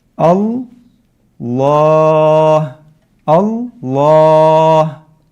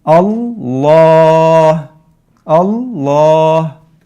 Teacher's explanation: So here, the word Allah is mufakhama. And so the lam in here is mufakhama, right? The alif that we're producing is going to be mufakhama.